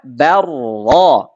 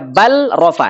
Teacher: Lamnya enggak jelas. Lamnya diidghamkan, dileburkan ke ro.